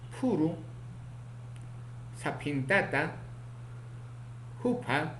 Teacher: Tenemos otro consonante PA, oclusivo, bilabial aspirado, sordo, ocurre en posición inicial, medial y final